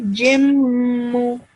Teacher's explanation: produce that 2-second meme sound when you're joining the jim to the meme